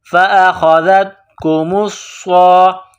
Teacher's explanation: صاد میں سختی کرنی ہے، صاد کو موٹا کرنا ہے، صاد میں سیٹی کی آواز پیدا کرنی ہے